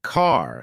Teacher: American accent often uses a strong R sound.